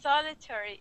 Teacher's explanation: solitary with the accent at the beginning